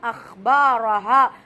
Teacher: பா அலிப் மத்தாவுடைய எழுத்து நீட்டி ஓதுங்க